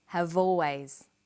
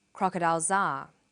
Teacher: we link the final consonant sound V